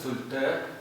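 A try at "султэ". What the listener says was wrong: Эл твердое. Султе. Султе. Эл. Султе.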